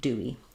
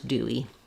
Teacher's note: when we move between an ooh a rounded vowel and an e an unrounded vowel we use vowel to vowel linking and we naturally have the rounded Glide in between those